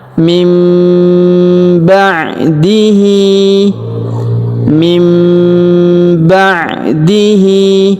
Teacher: Huruf nun sukun bertemu huruf ba, maka nun sukunnya melebur masuk ke huruf ba. Nunnya berubah menjadi mim ya. Dan juga kita dengungkan ya, kita tahan dengungnya 2-3 harokat.